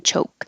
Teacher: you don't have to say the k choke just hold the k position choke the important thing is to keep the c h voiceless